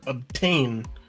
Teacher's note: Ob is kind of a lower lazier pronunciation. And then tain feels really strong. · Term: unstressed stressed syllable pattern